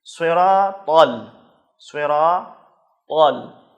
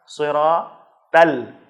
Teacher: طا کو موٹا کر کے پڑھا جائے اور تا کو باریک پڑھا جائے۔ یہی ایک خصوصیت ہے جس کے ذریعے سے ہم طا اور تا میں فرق کریں گے، لہذا اس کا خیال رکھنا ضروری ہے۔